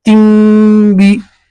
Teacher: तनवीन नहीं पढ़ेंगे, सिर्फ ता के नीचे एक जेर पढ़ेंगे और ती को मीम से मिला देंगे